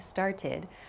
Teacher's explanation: An id sound, started, a soft D sound like breathed, and then a more hard T sound like walked. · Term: past tense verb sounds